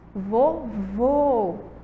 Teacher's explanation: escuta o som do ó ele deu uma fechadinho ó vovó vovô tem um som aí mais fechado